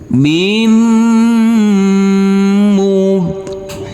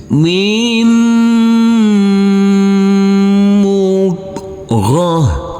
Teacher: huruf mim yang bertasdid ini kita dengungkan kita tahan serta kita tekan